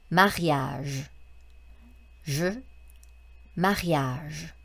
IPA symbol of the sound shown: ʒ